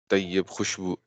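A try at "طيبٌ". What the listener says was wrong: اور نہیں طیب نہیں، طیبن، طیبن. طیبن، طیبن، طیب خوشبو.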